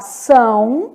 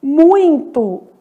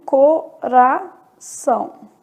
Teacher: Então, são, muito, pronunciados aí pelo nariz.